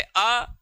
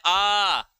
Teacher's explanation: जैसे अ बोलने में कम समय लगा, लेकिन इसका दुगना बोलने में समय जो लगता है आ, तो ये इसलिए द्विमात्रिक हो गए, इसको दीर्घ स्वर कहा जाता है।